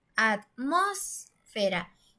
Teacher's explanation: suena más fuerte en la antepenúltima sílaba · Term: sílaba tónica